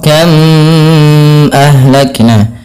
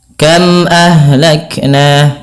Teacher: yang dalam membacanya harus diperjelas suara mimnya dan tidak boleh ada penahanan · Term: izhar syafawi